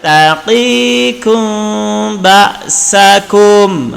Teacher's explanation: Karena mem mati bertemu dengan ba, maka kena dengung. Tapi sembunyikan mem, bibir tak rapat.